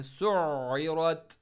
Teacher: आइन को middle throat और स्ट्रेस के साथ पढ़ना है